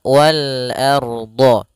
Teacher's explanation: A tipis rnya tebal